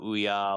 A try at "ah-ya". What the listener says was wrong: It's not ooh-ya, it's ah-ya. you gotta work on your pronunciation.